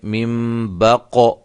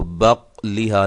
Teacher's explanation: یہ قاف قلقلہ ہے، اس کو ہم نے ہلایا ہے